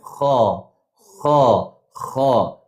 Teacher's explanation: Kalau sebut huruf kha tu dia tak keluar angin · Tapi bunyi kha bulatkan tuan puan tahu tak bulatkan mulut.